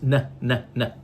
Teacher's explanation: it comes my friends from a place called alveola Ridge where is the alveola ridge it's behind your upper teeth here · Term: n Sound